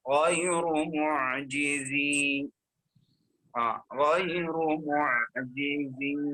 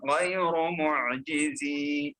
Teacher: وفي الوقف نقرأ الياء لأن ما في التقاء الساكنين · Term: مد طبيعي